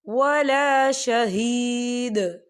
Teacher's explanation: یہ دیکھیں آپ کو چھوٹی سی توہین لکھی نظر آ رہی ہے، تو یہ وقف مطلق کی علامت ہے، تو یہاں پر ٹھہرنا بہتر ہے۔ وقف کی صورت میں دال ساکن ہو جائے گا